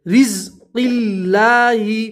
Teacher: اللہ کا لام بھی باریک پڑھیں گے کیونکہ اللہ کے لام سے پہلے زیر ہے تو اللہ کا لام باریک پڑھیں گے.